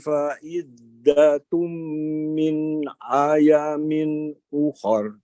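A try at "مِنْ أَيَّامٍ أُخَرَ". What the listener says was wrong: Nah, iyanya di situ ditahan ya, ditekan. Min ayyamin ukhar.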